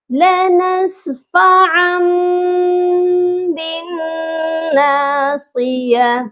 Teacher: لنسفعا بالناصیہ، یہ اقلاب کہلاتا ہے، ہم نے نون ساکن اور تنوین کی آواز کو میم میں بدل دیا ہے